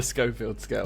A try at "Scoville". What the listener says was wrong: You're saying Scoffield.